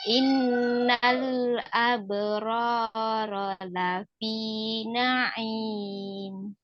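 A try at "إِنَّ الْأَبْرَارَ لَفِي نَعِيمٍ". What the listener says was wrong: Ya, tinggal roknya, manyunnya dihilangkan, itu juga masih pakai gerak bibir ya, belum pangkal lidah ya.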